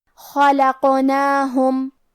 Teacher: کلمت خلقناہم حرف الخاء کو ہمیں موٹی آواز میں پڑھنا ہے، یہاں حرف القاف ہے اور اس پہ جزم ہے، کیونکہ قاف بھی حروف القلقلہ میں سے ہے تو ہم یہ حرف کو ہلاتے ہوئے یہ کلمہ کو پڑھیں گے۔ خلقناہم، آخری میں میم ساکن ہے، پھر حرف المیم ہے۔